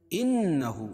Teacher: إِنَّهُ نون مشدد، اس میں غنہ ہوگا، الٹا پیش قائم مقام غومدہ کے، اس کو ایک الف کے برابر کھینچ پڑھیں گے.